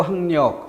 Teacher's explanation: 학력 할 때 기억이 이응이 되는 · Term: 비음화